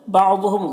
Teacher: ہا میں الف مدہ ہے، ایک الف کے برابر کھینچیں گے۔ بعضهم ضاد حروف مستعلیہ میں سے پر پڑھیں گے۔ میم میں اظہار شفوی ہو رہا ہے، اسے جلد پڑھنا۔